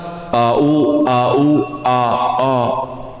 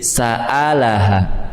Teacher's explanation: sifat untuk Hamzah itu tipis tipis Berarti enggak boleh tebal-tebal dalam membacanya